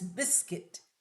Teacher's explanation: It's not pronounced as biscuit. Although U sound is there in writing but in speaking that oo sound is not there. It is biscuit.